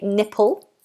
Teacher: this word has again a dark l sound